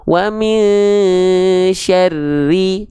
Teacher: di huruf ro bertasydid ini nggak perlu kita tahan dua harokat